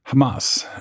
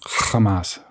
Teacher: The correct pronunciation includes a little bit of guttural at the beginning.